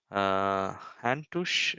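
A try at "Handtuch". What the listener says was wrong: it's not tu. You can say tush, but in our city we say handtuk. Handtuk.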